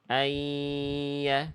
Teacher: Ayya harusnya ditahan dulu 2 harokat. Lebur lalu tahan dengungkan selama 2 harokat. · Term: idgham bikunah